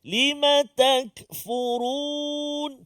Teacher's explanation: huruf kaf bukan tergolong dalam kalangan huruf yang qalqa. Jadi jangan melantun.